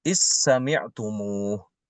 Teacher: Contoh seperti idh sami'tumuh di surat An-Nur, idh sami'tumuh. Imam Hisham membaca dal itu ke sin, diidghamkan ke sil, huruf sin. Jadi dibacanya is sami'tumuh.